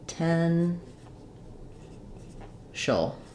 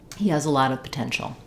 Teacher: So we have stress on the middle syllable. So we have a schwa, potential, and an SH sound. So it sounds like potential.